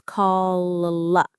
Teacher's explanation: The sound is coming from the back of my mouth, from my throat almost. That's the dark L, and it has a huge effect on the vowel that comes before it.